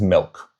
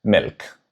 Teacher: The English short i sits high in the mouth, the Norwegian version drops it down